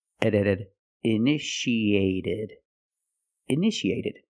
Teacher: the second T is between vowels so we pronounce it like a fast D